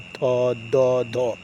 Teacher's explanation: दांत से जिह्वा टकराती है, इसलिए ये हुआ दंत वर्ण